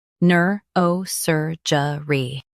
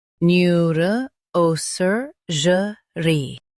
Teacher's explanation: New, R, O, Sir, J, Re, NEUROSURGERY, New, R, O, Sir, J, Re, NEUROSURGERY. In US, stress Sir. In UK, stress O.